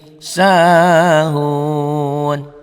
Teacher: panjangnya jadi 5 ketukan 5 harokat dengan catatan ini dihentikan dalam bunyi, dalam membacanya berhenti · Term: mad arid lisukun